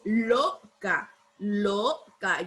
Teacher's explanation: la palabra loca lleva el acento porque no es loca, ¿verdad? Sino que es loca. Loca. Lleva el acento en la sílaba lo.